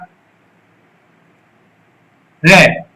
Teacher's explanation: जब आप रे शब्द का उच्चारण करोगे तो हमारी जीभ में कंपन पैदा होती है, जीभ के अग्रभाग में कंपन पैदा होती है, या फिर हमारी जीभ का अग्रभाग लुढ़कता है रे शब्द को उच्चारण करते समय। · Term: लुंठित